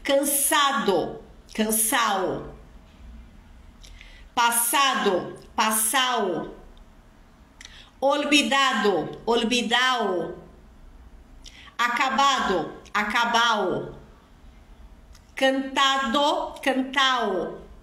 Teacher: principalmente em verbos no particípio formado em ado é comum a gente eliminar aí essa essa letra D da do particípio